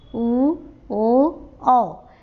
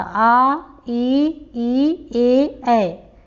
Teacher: जिनके उच्चारण में हमारे ओठ गोलाकार रूप में होते हैं वे वृत्तमुखी स्वर वर्ण कहलाते हैं। और जिनके उच्चारण में मुख जो है गोलाकार नहीं होता है वे अवृत्तमुखी स्वर वर्ण कहलाते हैं।